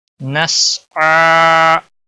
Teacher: نسعى، سین کو ہلانا نہیں، عین کے اوپر کھڑی زبر ہے، ایک الف کے برابر کھینچ کر پڑھیں گے